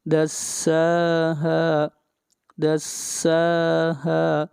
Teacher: سین کے اوپر بھی مد اصلی ہے اور ہا کے اوپر بھی